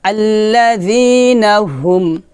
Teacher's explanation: আল্লাযী নুন জবর না, আল্লাযীনা, যিনা, আল্লাযীনা হামিম পেশ হুম হুম আল্লাযীনা হুম হামিম পেশ হুম এখানে হাটা নরমাল হবে হলকের শুরু থেকে বলতে হবে